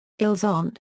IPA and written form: ilz‿ɔ̃ (ils ont)